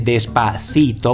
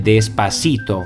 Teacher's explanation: non pronuncia la th ma sostituisce questo suono tipico della penisola iberica con la s, e questo è il fenomeno che si chiama seseo.